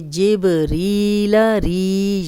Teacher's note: या मदा है, 2 हरकत लंबा करेंगे